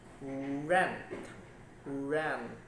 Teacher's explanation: just approach in near the roof of your mouth so there is not enough obstruction to create any friction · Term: approximate sounds